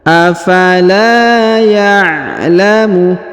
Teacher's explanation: Huruf la dipanjangkan 2 harokat yang ini karena di depannya terdapat alif